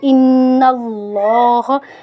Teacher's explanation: ان اللہ، نون پہ ہم غنہ کریں گے کیونکہ نون مشدد حالت میں ہے، اور لفظ اللہ کے نام کو موٹا پڑھیں گے کیونکہ اللہ کے نام سے پہلے حرف کے اوپر زبر ہے